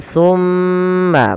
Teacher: pada lafal summa di sini ada bacaan yang kita namakan dengan bacaan gunnah, yaitu suara mimnya kita tahan